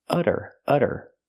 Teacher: we see the T pronounced as a fast D because it's between vowels